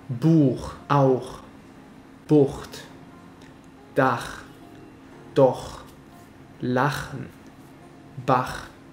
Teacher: Kommen wir nun zum harten CH mit mehr Friktion.